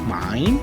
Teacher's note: So the voice starts high, dips down, and then rises again.